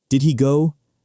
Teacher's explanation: We also drop the H sound at the beginning of words sometimes.